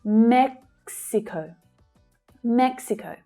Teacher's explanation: Okay that last syllable uses the /əʊ/ as in 'go' vowel sound.